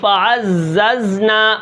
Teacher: اب یہاں پر تھوڑی سیٹی زیادہ ہو گئی زا کے اندر